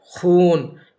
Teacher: نون کو ہم پڑھ رہے ہیں بالکل صاف ظاہر ہو رہا ہے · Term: نون ظاہر